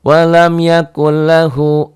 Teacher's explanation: dibaca memasukkan tanpa gunah, tanpa ditahan, tanpa dengung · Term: idgham bila guna